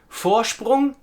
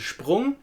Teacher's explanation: You hear that sound as if there was an SH sound in there instead of just an S.